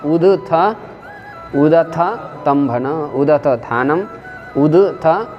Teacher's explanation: थ का जैसे विवार, श्वास, आघोष महाप्राण है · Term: थकार